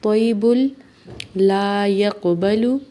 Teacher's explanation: تو کو موٹا پڑھنا ہے اور با کو لام سے ملانا ہے · قاف پہ قلقلہ ہوگا، قاف کو موٹا بھی پڑھنا ہے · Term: ادغام